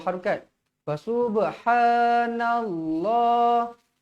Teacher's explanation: lafzul jalalah sebelumnya berbaris atas wajib dibaca tebal